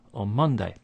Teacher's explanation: And in the phrase on Monday, here we have a n sound at the end of on, followed by a m sound at the beginning of Monday. So this causes the n sound to change to be like a m. So it sounds like on Monday.